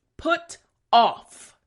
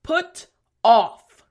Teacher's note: Front teeth, bottom lip for the F sound.